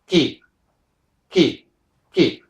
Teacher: the back of the tongue Rises and seals against the soft pallet once it seals we're only breaking the connection but without any